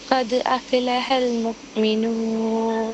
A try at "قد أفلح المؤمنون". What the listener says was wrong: ഖദ് അഫ്ലഹ എന്ന് പറയാണ്ട് ഖദ് അഫ്ലഹ, അഫ്ല പറയാണ്ട് അഫ്ലഹൽ മുഅ്മിനൂൻ.